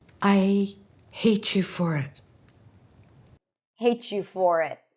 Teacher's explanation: It's the combination of a T and a ya that lead to the pronunciation of a ch sound.